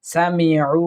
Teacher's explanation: সামিউ, এটা আইন ওয়াও পেশ, উ এক আলিফ পরিমাণ টানার চেষ্টা করব